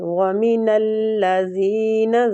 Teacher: زال نرمی کے ساتھ زبان کی ٹپ تھوڑی سی باہر آئے گی اور یا لین ہے یا مد ہو رہی ہے تو اس کو ہم کھینچیں گے بھی.